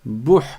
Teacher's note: Je passe du ba directement au ha. Bouh. Le ha a un soukoun, donc je m'arrête dessus et je ne mets pas de voyelle après.